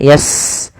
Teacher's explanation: Sin punya sifat namanya hamas, alirkan nafasnya yas. Kemudian taf alirkan juga karena fa juga hamas.